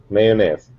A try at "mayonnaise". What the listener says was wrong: Mayonnaise. Don't forget the O. Mayonnaise. Mayonnaise.